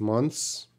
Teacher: So if you say months, if you said 3 months, everyone's going to understand you because the TH is so reduced, so quiet, that it's not so important to the sound of the word.